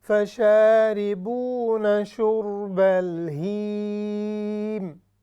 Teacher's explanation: حرف ہا یہ حلق سے ہے، بالکل نچلے حصے سے. تو جب اس کی آواز آئے گی تو ہی ہم اس کو ناک میں نہیں لے کے جائیں گے، ہم اس کو نیچے ہی رکھیں گے جو اس کا مخرج ہے.